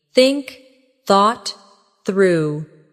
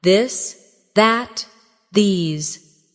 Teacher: For example, the the sound in think or this. Put your tongue between your teeth and push air out for think. For this, your tongue touches the same position, but with your voice turned on. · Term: the th sound